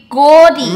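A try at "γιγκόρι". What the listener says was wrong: Not go. Yigo. Yigo. Not go. Yo. Yo. Like yo. No, you're doing the go still. Yigo. Yigo.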